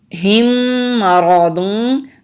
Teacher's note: را کو موٹا پڑھیں گے، را کے اوپر زبر ہے۔